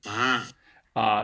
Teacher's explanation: na, na, And you might also notice with this one, ma, there's kind of a dip in F0 he gets right after he produces this breathy voiced nasal that you don't hear for the modal voiced one.